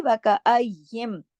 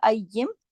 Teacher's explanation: نون ساکن کے بعد میم ہے تو اس میں ادغام ہو رہا ہے اور پورے غنے کے ساتھ ہو رہا ہے. اس کو کہتے ہیں ادغام تام بالغنہ، یعنی مکمل غنے کے ساتھ، کیونکہ نون اور میم 2 حروف ایسے ہیں کہ ان پر بڑا اکمل غنہ ہوتا ہے نا، تو اس وجہ سے یہ مکمل غنے کے ساتھ ہوتے ہیں.